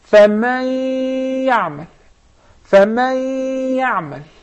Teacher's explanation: So when I merge the noon into the ya, it will remain some of its traces, its sound, which is the غنة. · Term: idgham with ghunna